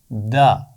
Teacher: زبان کی نوک اور اوپر والے دانتوں کے پیچھے لگا کر دال کی آواز ادا کی جاتی ہے